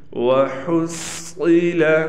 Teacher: وحصل، یہاں بھی صاد کا خیال کرنا ہے کہ صاد کو موٹا کر کے پڑھیں گے، اگر موٹا نہ کیا تو صاد سین بن جائے